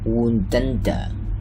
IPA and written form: wuːnd-ʌn.də (wound-under)